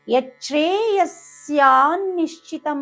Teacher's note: కానీ అక్కడ విసర్గ పలకదు ఎందుకంటే దాని తర్వాత అక్షరము స వచ్చింది స అంటే అక్కడ దంతవ్యస స అంటారు దాన్ని స వచ్చింది కాబట్టి యస్య